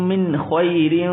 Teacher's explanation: من اخفا نہیں ہوگا آگے حروف یہ خواہ ہے اور خواہ حروف حلقیہ میں سے